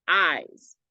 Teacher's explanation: The second part, eyes, is definitely a stress syllable. That I sound goes on very far. We only get the S at the very end. Eyes. The S at the end very short.